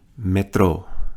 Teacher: notice the accent on the final syllable